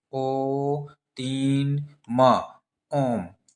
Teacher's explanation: मतलब बहुत देर तक राम बोल रहे हैं, तो उसको क्या कहेंगे हम लोग, त्रैमात्रिक या प्लुत स्वर कहेंगे